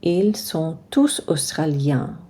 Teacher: So we don't say the S on il, we don't say the T on sont, we don't say the N on australien, we don't say that final S.